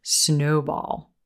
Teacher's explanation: with words like this you're always going to emphasize the first word